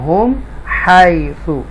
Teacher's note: मीम साकिना के बाद हा आ रहा है, मीम को क्लियर पढ़ेंगे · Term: इज़हार शफ़वी